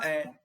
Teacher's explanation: ना चपटाकार होंगे ना गोल होंगे। क्योंकि अगर हम इसका उच्चारण करते हैं तो आपका मुख इसमें हल्का सा खुलेगा। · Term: उदासीन स्वर